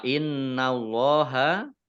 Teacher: Innallaha Nun tasdid dibaca hunnah atau mendengung ya tahan 2 harokat Allah dibaca tebal karena harokat di depannya fathah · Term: gunnah